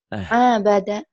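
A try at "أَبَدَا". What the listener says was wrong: nggak ada yang panjang, nggak ada yang panjang. Abada, gitu atuh. Nggak ada yang panjang kan? Abada.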